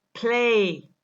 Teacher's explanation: When we pronounce the word play, the le sound, which is a voiced sound, loses some of its voicing because of the aspiration of p